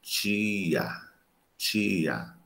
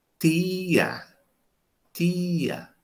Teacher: Mas se eu estiver em Pernambuco, que é colado ao Ceará, fronteira com o Ceará, Rio Grande do Norte, por exemplo, fronteira com o Ceará, se eu der esse nome TIA para uma pessoa ler, ela vai ler assim, tia, tia. Ela não vai chiar, ela vai dentalizar.